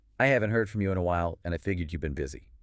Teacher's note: the intonation generally rises a little bit at the beginning or through the middle of the sentence and then it falls at the very end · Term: rise fall shape